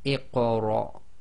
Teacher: The one before it will always be sakin. So we're going to read the Hamzatul Wasl as if it's got the kasra underneath it · So that's going to be Iqra. And again, it's short half sound on the ra because the next letter is a hamza with sukun